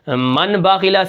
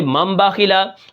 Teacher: تو یہ تھا آج کا ہمارا سبق، جس کے اندر ہم نے یہ پڑھا ہے کہ اگر نون ساکن نون تنوین کے بعد با آ جائے تو وہاں پر ہم چھوٹی سی میم لے آتے ہیں اور نون کی آواز کو ختم کر کے اس میم کی آواز کو جاری کیا جاتا ہے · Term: اقلاب